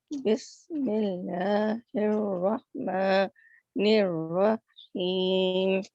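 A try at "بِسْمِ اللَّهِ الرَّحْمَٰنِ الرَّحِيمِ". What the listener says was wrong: बस ये रहमान और रहीम में हा और भी मतलब ज़बान थोड़ी सी और पीछे चली जाए। दोबारा सुनाएं।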